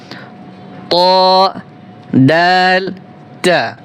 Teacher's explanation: জিহ্বার আগা সামনের উপরের দুই দাঁতের গোড়ার সঙ্গে লাগিয়ে তিনটি হরফ উচ্চারিত হয়।